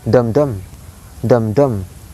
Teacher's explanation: 2 stressed syllables, 2 high sound syllables. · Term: spondaic